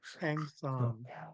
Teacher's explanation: And the last K, we call it a loaded K because it's underlined and it's pinched with a glottal stop. And it's halfway between the pinch K and the underline K.